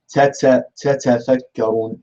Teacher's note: the incorrect seen sound, comes due to the fact that there is still air flowing whilst the tip of the tongue is close to the thanaya. This is an incorrect makhraj, and it is an incorrect ta.